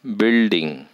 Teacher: stress secondary stress is understood building in this dye syllabic word first syllable is the prominent syllable hence it takes stress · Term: primary stress